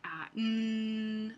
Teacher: el velo se baja para que pueda pasar el aire por la cavidad nasal en lugar de la cavidad bucal de hecho vamos a vamos · en lugar de salir el aire por la boca el aire Sale por la nariz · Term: nasales